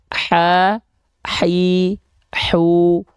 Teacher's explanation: H kecil dia punya sifat hams mengalir nafas pasti dari segi suara dia rohah juga tuh mengalir suara juga